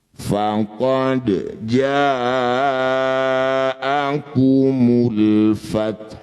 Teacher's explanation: Ketika dihentikan haknya tetap dibaca, sifatnya tetap keluar ya ada udara lembut keluar dan tidak usah dibunyikan dumahnya.